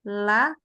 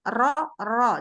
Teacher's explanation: Nah, sementara ini dia posisinya lurus tuh. Kalau la lurus lidahnya, kalau ro lebih turun lidahnya.